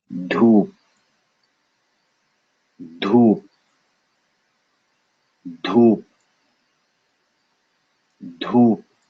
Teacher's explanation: So you have to, if you're used to hearing a big P for P in English, get used to it not having that P, dhoop. There is a P without air.